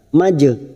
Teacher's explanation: jim sukun qalqalah sugroh karena mati asli di tengah kalimat jangan lupa dipantulkan majnun. Nun mat arid li sukun 4 harokat kita panjangkan.